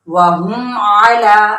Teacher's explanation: मीम को इसके मखरज से बगैर गुन्ना के तमाम सिफात के साथ अदा करना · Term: इजहार शफवी